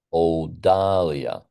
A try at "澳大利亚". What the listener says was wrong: open your mouth bigger. 澳大利亚。